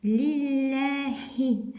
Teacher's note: Опять ташдид, поэтому удваиваем лям